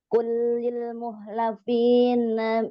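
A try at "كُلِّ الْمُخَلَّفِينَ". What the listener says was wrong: Mukhallasin, bukan mukhlasin, mukhallafin, bukan mukhlafin, mukhallafin.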